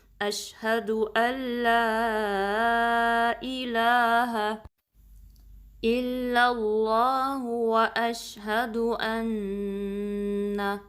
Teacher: لا کو 2 count stretch کرنا ہے، جو لا سے پہلے حمزہ کے نیچے کسرہ ہے اس کو آپ نے شارپ رکھنا ہے، اے نہیں پڑھنا بلکہ ای. الہ شارپ بھی رکھنا ہے، ہا کو اسٹریچ نہیں کرنا